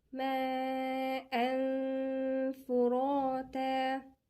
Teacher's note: ما، هنا في مد متصل 4 حركات. ماء فراتا، تنوين وفاء، غنة إخفاء